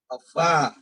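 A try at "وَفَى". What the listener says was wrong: Jangan ditasdidkan dia. Wafa.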